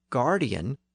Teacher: the French speakers further south around Paris pronounced them with a G sound